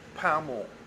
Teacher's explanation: Pam ends in a consonant. So most people would say Pamel. They would put a vowel after it.